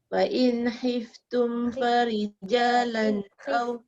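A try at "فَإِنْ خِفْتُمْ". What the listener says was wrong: khif, jangan hif. Khif.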